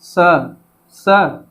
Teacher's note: स को हम किस में रखते हैं, दंत में रखते हैं, क्योंकि इसका उच्चारण करते समय हमारी जीवा जो है दांत को स्पर्श करती है